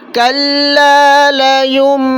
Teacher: نون ساکن کے بعد جب با آ جائے گا تو آپ غنہ کریں گے، یعنی ناک میں آواز چھپا کر پڑھیں گے، لیکن اس کے لیے آپ دونوں ہونٹوں کو بند کر دیں گے.